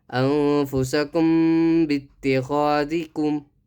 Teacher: میم ساکن کا قاعدہ ہوگا اخفاء شفوی. میم ساکن کے بعد با آئے تو غنہ کے ساتھ اخفاء ہوگا. انفسکم یہ اخفاء شفوی ہے.